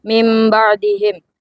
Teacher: nun mati berubah menjadi mim karena bertemu huruf ba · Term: iklab